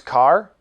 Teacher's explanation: when you pronounce car you end up with your tongue curled back pointing to the roof of your mouth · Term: curled are